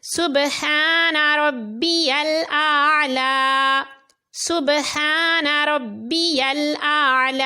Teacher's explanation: سبحان ربی الاعلی، اور اس میں بھی یاد رہے اعلی میں عین کی صحیح ادائیگی ضروری ہے. عین کو حلق کے درمیان والے حصے سے ادا کریں گے تو لفظ صحیح ادا ہوگا